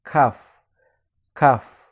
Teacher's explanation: berada di tengah-tengah dari pangkal lidah dan langit-langit mulut kita